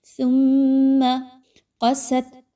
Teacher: میم مشدد ہے تو یہاں پہ اس کا غنہ کیجئے، آواز کو ناک میں لے کر جائیے اور تھوڑی دیر رک کر رکھیے۔ ثم قست، قاف موٹا حرف ہے، اس کو خوب موٹا کر کے پڑھیے۔